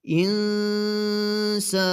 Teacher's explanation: dilimizi herhangi bir yere temas ettirmeden nun harfini çıkartıyoruz ins şeklinde okuyoruz yine aynı kelime bu kelimeden dolayı burada Durak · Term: ihfa